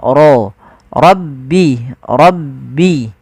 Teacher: lafal rabbi suara ro-nya ditebalkan